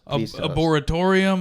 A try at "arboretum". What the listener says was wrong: There was no atorium in there.